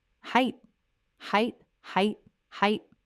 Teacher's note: just height. No th at the end.